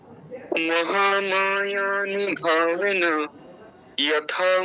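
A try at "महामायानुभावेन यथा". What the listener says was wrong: উচ্চারণ ঠিক আছে তবে সুরটা একটু অন্যরকম হয়ে গেছে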